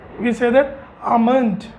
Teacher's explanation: L इसमें साइलेंट है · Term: L साइलेंट